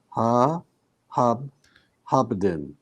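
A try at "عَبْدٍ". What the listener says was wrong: Okay, so why is this a ha? Ain, yes. So, do you remember how a hamza looks like? Just a small thing like this. So when it's a big one close to a hamza, it's an a.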